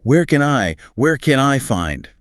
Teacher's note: In natural long tail fluency, the can gets reduced. It's not a hard A sound. >> Right, becomes a schwa.